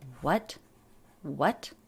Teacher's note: Notice the intonation goes up.